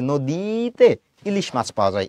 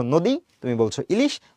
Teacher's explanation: যখন তুমি উচ্চারণ করতে যাও তখন কিন্তু তুমি দীর্ঘইটাকে দীর্ঘ করে উচ্চারণ করো না